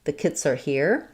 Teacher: The word the, very short and reduced. Make sure you use a schwa here